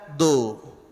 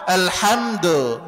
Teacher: dalnya domah maka monyongkan kedua bibir